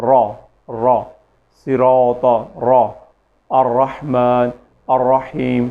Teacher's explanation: را ایک قدرے موٹا اور پڑھے جانے والا حرف ہے